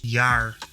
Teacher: in the Dutch word the final R sounds like a retroflex approximate rah like in some varieties of English